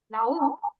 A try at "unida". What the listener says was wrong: No, tu en unida és la I, la tònica. Unida. Estic dient la diferència entre vocal tònica i vocal àtona.